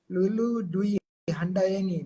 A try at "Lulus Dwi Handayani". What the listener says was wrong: Lulus Dwi Handayani, Pak. Kurang S. Lulus Dwi Handayani. iya kurang S.